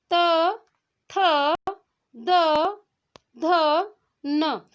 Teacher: जिन व्यंजनों को उच्चारण करने में हमारे दांतों का स्पर्श होता है उसे क्या कहते हैं, दंत व्यंजन कहते हैं। और इसके अंतर्गत त वर्ग से आने वाले सभी जो व्यंजन है वो आते हैं।